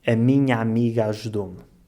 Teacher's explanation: juntar os dois As e pronunciá-los como um só A aberto.